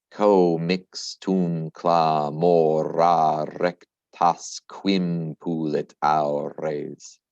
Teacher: I see a sneaky elision. Don't forget, this EM, that nasal sound, does elide.